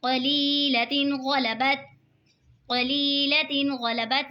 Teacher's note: قلیلۃ غلبت، قلیلۃ غلبت، یہاں پہ دیکھیں یا ساکن ہے، یا ساکن سے پہلے زیر ہے تو یا مدہ ہوگا، یا مدہ کو کھینچ کے پڑھتے ہیں۔ دو زیر کی تنوین کے بعد حروف ہلکی کا غین آ رہا ہے تو اظہار ہوگا یعنی گنہ نہیں کریں گے، دو زیر کی تنوین کو ظاہر کر کے پڑھیں گے۔